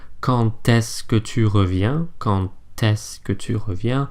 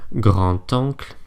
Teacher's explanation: D is pronounced more like a T when it's liaised.